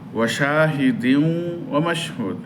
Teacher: তানবিনের পরে ওয়াও গুন্না হবে, মিলবে গুন্না হবে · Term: ইদগামে বা গুন্নাহ